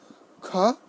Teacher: আবার যখন খ বলছি এর সঙ্গে হ হবে, খ, বাতাসটা বেশি বের হবে। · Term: মহাপ্রাণ